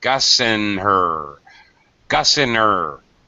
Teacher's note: drop the H's for these pronouns this is very normal native speaker speech